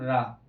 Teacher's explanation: रा को बोलते हैं प्रकंपित